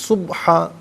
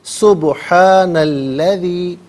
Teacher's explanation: سبحانہ میں با ساکن ہے لیکن یہاں قلقلہ کیا جائے گا، آواز لوٹتی بھی محسوس ہونی چاہیے